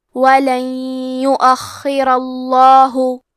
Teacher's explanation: آخری میں کیونکہ حرف الراء پہ زبر ہے تو لفظ الجلالہ مطلب کلمت اللہ کے لام کا حکم ہے تفخیم، تو ہمیں حرف اللام کو موٹی آواز میں پڑھنا ہے۔